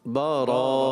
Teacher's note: آخر میں ہا کی ادائیگی نہ ہو